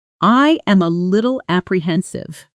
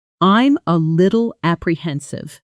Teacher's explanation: But in fast natural speech, it often compresses into something closer to I'm a little apprehensive with I'm blending almost into one beat and a little nearly disappearing into a little with that American flap sound turning the t into something closer to a soft d